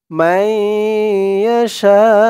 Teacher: এই জিম চিহ্ন হতে থামলে উ হবে না, ইয়াশা এরকম উচ্চারণ হবে। শা বলে 4 আলিফ টান দিয়ে এই হামজাকে ধরবে। হামজার উপরে পেশটা সাকিন হয়ে যাবে। শা, এখানে 4 আলিফ টান হবে, মধ্যে মুত্তাসিল।